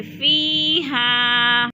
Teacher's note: فیہا یا ساکن سے پہلے فا کے نیچے زیر ہے تو ادھر یا مدہ کو بھی ہم نے ایک الف دو حرکات کے برابر لمبا کر کے پڑھنا ہے